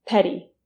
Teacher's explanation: Petty has a flap T sound, meaning your tongue should go like this in the middle of the word.